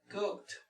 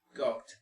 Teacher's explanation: primero tratamos de pronunciar la K y luego finalmente pronunciamos un poco la T